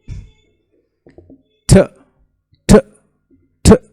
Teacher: आपको पता चलेगा कि मेरी जो टिप ऑफ द टंग है वो अल्वीलर रिज को टच कर रही है. यानी ये जो हमारा माउथ होता है ना, यहाँ पे ये टीथ जो हैं इसकी जगह पे कोई बुरी सी जगह होती है, इसको कहते हैं अल्वीलर रिज.